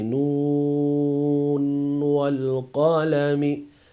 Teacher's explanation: they did as izhar. They finished with the noon and then it started with the wow.